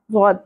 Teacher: ہوگا ضاد کا اپنا مخرج ہے ضد پر پر حرف ہے زبان کی کروٹ یا سائیڈ اوپر والی داڑوں کی جڑوں کے ساتھ لگتی ہے تو ضد ادا ہوتا ہے